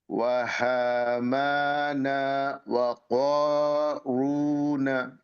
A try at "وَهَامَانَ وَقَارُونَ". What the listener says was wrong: আচ্ছা এখানে হায়ের উচ্চারণটা ঠিক মতো আসে নাই। আপনার হায়ের উচ্চারণটা মাঝখান থেকে চলে আসছে। হা টাইপের হয়ে যাচ্ছে। এই হাটা হচ্ছে ভিতর থেকে। ওয়াহামানা হা হা হা।